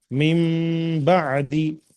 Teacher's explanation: नून साकिन के बाद बा आया, इस वजह से हम नून को मीम से बदल दिए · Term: इक़लाब